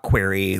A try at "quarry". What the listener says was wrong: query is a question well you said query it's a query this is your vowel thing again